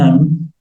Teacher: the sound takes place in the mouth and takes place in the nose at the same time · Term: ghunnah